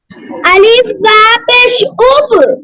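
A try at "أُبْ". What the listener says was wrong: হ্যাঁ সাফওয়ান, আলিফ তো নাই, আলিফ আলিফ কি হামজা হয়ে যায়, মনে আছে?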